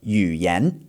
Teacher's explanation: the third tone just brings you down, and then the next word's second tone brings you back up again, completing a down then up movement.